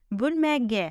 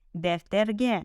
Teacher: Так как ударение в словах падает на последний слог, при добавлении аффиксов ударение будет падать на них.